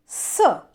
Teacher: हम एक हवा बाहर निकालेंगे दांतों से, स, तो आपकी जो जिह्वा है वो दांतों को स्पर्श कर रही है, इसलिए इसको कहा जाता है दंत्य। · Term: दंत्य सकार